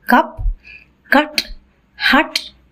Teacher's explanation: Another central vowel is the a sound that you find in words like cup, cut, hut, etc. So these are the two central vowels.